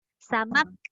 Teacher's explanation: Okey, ada bunyi angin kat hujung. Samak sebab dia tahan suara tapi lepas udara.